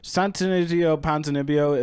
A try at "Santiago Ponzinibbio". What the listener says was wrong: Santiago Ponzinibbio. You said Santonizio Ponzinibbio. There's no alliteration or rhyming it going on. Santiago.